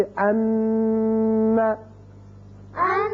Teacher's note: جب ان کے اوپر شد آ جائے تو وہاں آواز رکے گی ایک الف کے برابر، جیسے ان. ان، یہ جو تھوڑی دیر کے لیے آواز ناک میں رکی ہے یہی غنہ ہے، اسی کا نام، اس آواز کا نام غنہ ہے.